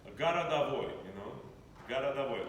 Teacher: In unstressed position in Moscow, O vowel is always pronounced as A. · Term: akat